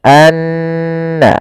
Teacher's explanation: Maka cara membacanya tahan dulu n-nya, anna, baru dilepas. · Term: gunah, gunnah